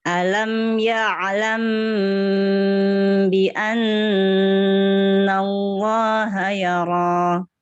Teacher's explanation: huruf ainnya dialirin dulu sedikit.